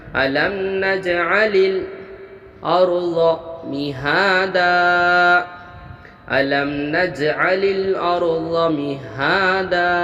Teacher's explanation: لمنا، یہاں پر اظہار شفوی ہوا، نج میں قلقلہ ہوا، اظہار شفوی میں ہم ظاہر کر کے بغیر غنہ کے جلد ادا کریں گے، اور نج میں قلقلہ ہوا تو پڑھتے وقت آواز لوٹیں گی، اور یہاں پر الف لام میں حروف قمری ہوا اور را ساکن سے پہلے زبر ہونے کی بنا پر را کو ہم پر پڑھیں گے۔